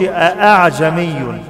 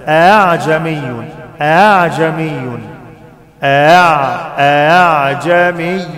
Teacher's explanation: بنطق الهمزة الأولى وبعمل في الهمزة الثانية حاجة اسمها تسهيل، اسمها تسهيل، ما بنطقهاش قوي، ما بقولش أأعجمي، مش أآ، لا، أأعجمي.